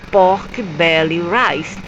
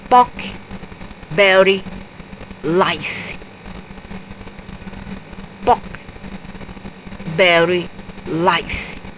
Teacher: they change the l for the r sounds